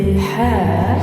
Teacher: হায়ের মখরজ মধ্য কণ্ঠনালী একটু চাপিয়ে বলবে হা।